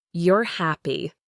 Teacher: Rising intonation, your voice goes up at the end, often signals a yes no question.